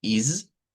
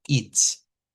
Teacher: esta es una S vibrante, is, y esta es una S silbante con una T